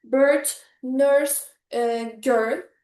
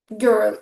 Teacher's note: the lips are slightly rounded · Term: the nurse vowel